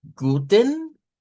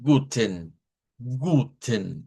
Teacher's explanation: puede pronunciarse o no la shba. O sea que esta se puede decir como guten, donde suena en, guten, ahí sí hay un sonido de esta vocal, o nada más guten, guten, más seco.